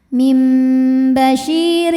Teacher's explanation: rnya dibunyikan secara tarqik karena berbaris kasrah tanwin maka dibacanya tipis